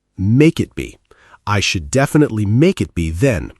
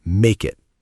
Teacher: The consonant K links right into the vowel I.